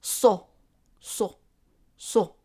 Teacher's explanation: Saad. And the sound of it in MSA is S, but pronounced in the back of the mouth. So it's so, so, so.